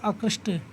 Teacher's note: त के पहले श आ रहा है, मूर्धन्य श आ रहा है, इसलिए त के स्थान पर त का समांतर वर्ण है ट, तो ये ट हो जाएगा , तो बन गया आकृष्ट। ऐसे न का समांतर वर्ण यहाँ